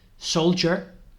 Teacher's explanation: la D suena casi como una J así suave